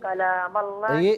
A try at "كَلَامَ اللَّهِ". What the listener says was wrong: یہ ایک منٹ نا، یہ جو کلام میں کاف ہے اسے باریک پڑھیے۔